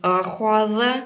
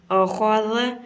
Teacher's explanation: Next ہمارا لفظ ہے اخذ، یعنی حمزہ کو نارمل طریقے سے پڑھنا ہے، خوا کو موٹا کرنا ہے یعنی منہ کو گول کر کے پڑھیں گے، اور جو ذال ہے، ذال کو جب زبان کو کی نوک کو دونوں دانتوں کے درمیان میں رکھیں گے تو ذال اس طرح ادا کریں گے اخذ، یعنی کہ خوا کو پر کرنا ہے اور ذال کو نرم پڑھنا ہے اخذ۔